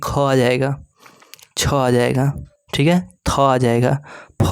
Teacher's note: वर्णों के उच्चारण में श्वास वायु की मात्रा अधिक होती है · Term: महाप्राण